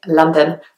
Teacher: I used to really enunciate the O's and kind of really enunciate the syllables, but actually most people just say London, which almost sounds like there's an A instead of the O